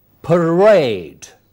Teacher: that in these words in musician the middle part is stressed in parade it is second syllable which is stressed